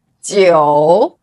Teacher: The numbers 5, 9 are in the third tone, where the pitch goes down first and then rises.